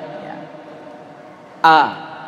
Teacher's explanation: Hamzah tenggorokan bagian bawah. Tenggorokan bagian bawah.